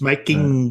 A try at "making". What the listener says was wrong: Don't forget, you've really got to pronounce that G at the end of